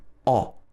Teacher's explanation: when you make the sound o which is very particular to the british accent your tongue is at the bottom of your mouth at the back